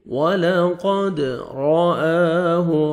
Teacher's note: را کو مر زبر ہے، را کو موٹا کر کے پڑھیں گے، حمزہ کو مر کھڑا زبر ہے، الف مدہ کے قائم مقام ہے، 1 سیکنڈ کھینچیں گے، ہاں کو اپنے صحیح مخرج سے ادا کریں گے۔